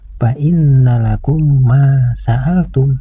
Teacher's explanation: Huruf mim yang bertasdid ini harus dibaca gunnah, yaitu dengung ke hidung. Panjang dengungannya sekitar 1 alif setengah atau 3 ketukan.